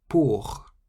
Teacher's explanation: Pour means for, and you can hear the R on the end. The R on the end of a word in French sounds almost like a harsh H sound.